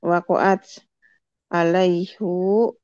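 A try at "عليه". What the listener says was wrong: Bukan. Bukan. Alaihu. alaihu? Kenapa dibaca alaihu? Alaihi.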